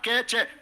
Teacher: चे होता आपका तालव्य, तालु से बोला जाएगा